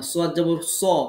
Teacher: সদ কখনোই সিনের মতো বারিক পড়া যাবে না।